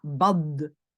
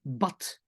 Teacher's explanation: c'est le D à la fin qui vraiment doit être prononcé t